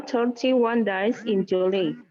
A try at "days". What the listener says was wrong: day-nya juga days ya. Days. Days, bukan dice ya.